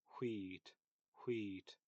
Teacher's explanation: I would pronounce it with this like H, ha, but with rounded lips.